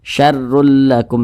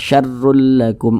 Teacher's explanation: baca dommahtain maka huruf rnya ini dibaca tebal dibaca tkhim sehingga ketika Kita mengucapkannya itu pangkal lisan kita itu naik terangkat ke atas